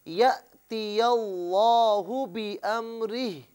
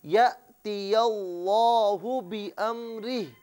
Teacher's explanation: لفظ اللہ کی لام کو موٹا کر کے پڑھیں